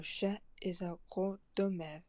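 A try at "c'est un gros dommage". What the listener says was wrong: Right, and then there I'm kind of hearing the same R, I guess, issues that I was hearing with carnivore, where I'm kind of hearing like dommeur almost. Like dommeur. So I think the vowel quality is there, or and but I'm just not hearing enough of the R. I'm kind of hearing like dommeur, almost as if the R's were not there, and when we'd want like dommeur, or something along those lines.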